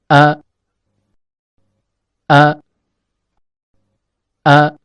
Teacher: Makhraj huruf hamzah terletak pada pangkal tenggorokan yang merupakan tempat bagi pita suara.